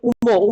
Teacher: মহাপ্রাণ আর নাসিক্য বর্ণের মধ্যে দেখো নাসিক্য হচ্ছে উম উম দেখো উচ্চারণ করতে গেলে একটু নাকে বেঁধে যাচ্ছে